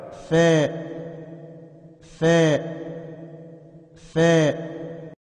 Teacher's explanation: اوپر کے دانتوں کا کنارہ نیچے کے ہونٹ سے مل کر فا ادا ہوتا ہے